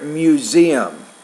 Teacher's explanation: You want to say there, museum. So the stress is on the second syllable there.